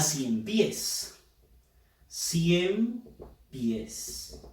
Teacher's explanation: Fuerza de voz en la sílaba pies. Termina en una S.